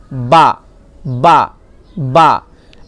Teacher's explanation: 15 15 number মাখরাজ কি বলছে দেখুন 15 নাম্বার মাখরাজ হচ্ছে দুই ঠোঁটের ভিজে অংশ মিলিত হয়ে উচ্চারিত হয়